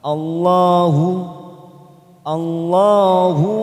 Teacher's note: berhenti pada wakaflam Al waqfu Aula sini artinya sebaiknya berhenti Allahu lam jalalah kita baca tafkhim karena didahului fathah